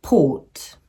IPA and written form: pɔːt (port)